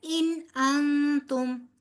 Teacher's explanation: ان کا اظہار ہوگا اور اگلے والے نون پہ آپ اخفا کریں گی